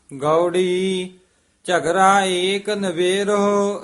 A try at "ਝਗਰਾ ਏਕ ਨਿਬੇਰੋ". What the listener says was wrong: ਝਗਰਾ ਏਕ ਨਿਬੇਰੋ। ਇੱਥੇ ਵਿਸਰਾਮ। ਝਗਰਾ ਏਕ ਨਿਬੇਰੋ RAM। ਨਿਬੇਰੋ RAM ਨਹੀਂ ਕਹਿਣਾ।